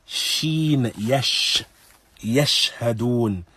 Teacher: With sheen, it comes close to the upper palate, but there is a very small void and a small space.